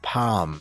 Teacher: we definitely just kind of get rid of the l